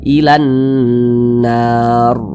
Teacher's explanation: Ada huruf ro sukun, sebelumnya ada huruf yang memiliki tanda baca fathah, maka huruf ro sukunnya dibaca tabkhim.